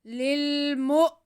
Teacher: آگے میم پہ پیش ہے اور حمزہ ساکن ہے تو میم کو ہم حمزہ سے ملا لیں گے اور حمزہ کو جھٹکا لگا کے پڑھیں گے. للمؤ.